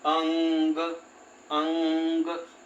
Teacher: पूरा म नहीं आएगा पूरा न नहीं आएगा दोनों को मिलाकर के नासिका से जब उच्चारण होगा ना तो इसमें आधा म और आधा न की ध्वनि हमें सुनाई देती है। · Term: अनुस्वार